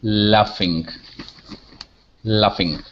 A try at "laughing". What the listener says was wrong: Okay, good.